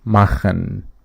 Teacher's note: this en at the end of the verbs is pronounced syllabically